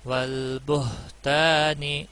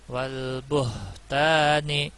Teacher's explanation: والبہتان ہا کا خیال رکھنا ہے، یہ نرمی والا ہا ہے، حمزہ ہا جو سینے کی طرف سے سانس چھوڑتے ہوئے ادا ہوتا ہے